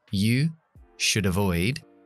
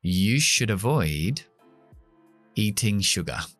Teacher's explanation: Fíjate también cómo pronuncio should muy corta, muy seca, esa palabra unida a avoid. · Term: schwa